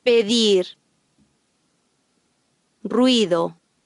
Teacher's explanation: The Spanish D is pronounced soft after a vowel.